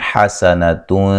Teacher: نون تنوین کا باریک اخفا ہے، غنہ کر کے پڑھیں گے۔